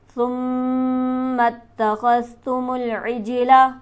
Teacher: ثم اتخذتم العجل، تمام حروف کو جلدی پڑھیں گے. جیم پر ہمارے پاس حرف قلقلہ موجود ہے، لہٰذا یہاں آواز اچھلتی ہوئی معلوم ہوگی